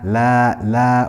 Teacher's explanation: We have here mad tabi'i, we have fatha followed by an alif, so this is stretched for 2 harakat.